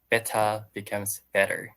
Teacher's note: that's very common for us to just not pronounce the T or pronounce it like a d